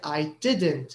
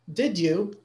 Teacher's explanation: We didn't stress any of them. We did stress the auxiliary, but only in the negative, right? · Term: negative auxiliary